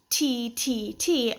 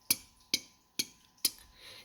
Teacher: And then your T sound is not necessarily T, T, T, but just that kind of airy sound of your tongue hitting the roof of your mouth, like t, t, t, t.